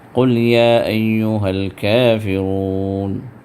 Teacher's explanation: یا بغیر کھینچے بھی آپ پڑھ سکتے ہیں، صرف 2 حرکت کھینچ کر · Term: مد منفصل